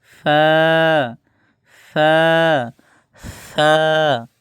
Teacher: নিচের ঠোঁটের যে পেট আছে এই পেটটা সামনের উপরে দুই দাঁতের আগার সঙ্গে লাগাবেন। ওই আবারও সামনের দাত 13 নম্বার মাখরাজের মত সামনের যে দাঁতের আগাবার নিচের ঠোটের পেটের সঙ্গে লাগাতে হবে।